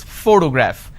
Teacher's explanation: When I pronounce this particular word, photograph, the correct pronunciation is photograph, which means I am stressing on this particular syllable, which is the first syllable.